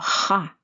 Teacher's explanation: Ce son qui n'existe pas en français est produit par la friction de l'air qui passe entre la langue et le palais